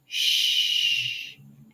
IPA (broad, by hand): ʃ